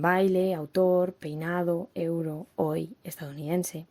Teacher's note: Los diptongos son secuencias de dos vocales pronunciadas en la misma sílaba y pueden estar formados por una vocal abierta, a, e, o, y una vocal cerrada átona y u, como en baile, autor, peinado, euro, hoy, estadounidense.